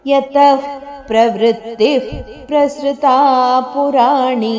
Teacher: ಯತ ದ ನಂತರ ಬಂದ ವಿಸರ್ಗದ ಉಚ್ಚಾರಣೆ ಮಹಾಪ್ರಾಣ ಪ ಅರ್ಧದಷ್ಟು